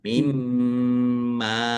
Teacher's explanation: Mimma mim tasdid ghunah atau mendengung. Ditahan biar tampak mendengungnya. Mimma. Mim fathah alif mad thobi'i panjang dua harakat.